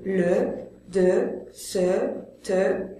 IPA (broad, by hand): ə